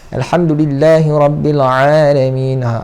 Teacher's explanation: huruf ain makhrajnya di tengah kerongkong sama dengan huruf ha · Huruf ain ni dipakai di kerongkong ya. Dia tak pakai hidung.